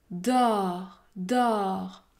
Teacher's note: vos lèvres sont arrondis et votre langue est plus aplati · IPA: /ɔ/